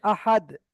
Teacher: এখানে লেখা রয়েছে আহাদুন কিন্তু এই দুনটা পড়া যাবে না কারণ কি আমি এখানে দালের উপরে থামছি